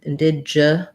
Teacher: So for indigenous has second syllable stress. So the first in is unstressed. And then it looks like the word dig, but we use a j here, indigenous.